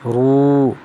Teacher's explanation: واو ساکن سے پہلے پیش ہے اس لیے واو کو کھینچ کر پڑھیں گے، واو مدہ کہلاتا ہے۔